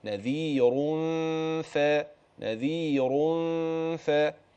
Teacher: لا يطغى هذا على على هذا ولا ينفك هذا عن هذا يبقى الراء تفخم نعم الغنه ترقق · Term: تفخيم الراء